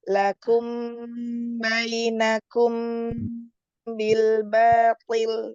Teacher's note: Mim sukun bertemu dengan ba, ikhfa syafawi ditahan dulu.